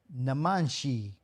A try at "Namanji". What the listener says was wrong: It's not a sh.